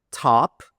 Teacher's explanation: Aspirated. The air comes out.